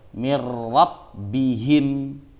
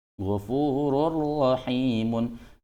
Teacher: idgham bila ghunah bacanya tidak dengung